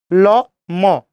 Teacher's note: ল, ম, বাতাস নাই, ওই জন্য এগুলো অল্প প্রাণ